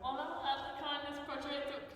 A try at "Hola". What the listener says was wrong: 2019 hasn't changed the fact that you still don't pronounce the H. Just hola, kindness. We've been doing this for a year, and every time it's holla, kindness.